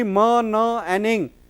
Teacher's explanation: all the three are voiced because vocal cords vibrate